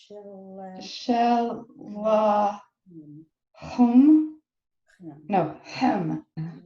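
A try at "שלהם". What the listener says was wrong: Good job. Put it together again.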